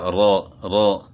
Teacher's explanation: زبان کا کنارہ سامنے والے دانتوں کے مسوڑوں سے را کو ادا کرنا ہے، لیکن اس میں زبان کی پشت کو بھی دخل دے، زبان کی پشت بھی جو ہے اس میں شامل ہے، جس کی وجہ سے اس میں جو ہے نا آواز تھوڑی سی موٹی بھی ہو جاتی ہے، رو رو۔ اچھا، تو یہ مستقل یعنی اس کو موٹا نہیں کرتے، بلکہ کبھی را جو ہے نا باریکی پڑی جاتی ہے زیر کی صورت میں، تو وہ را کے بیان میں انشاءاللہ آئے گا۔